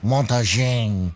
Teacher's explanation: The N has to be a nasalization.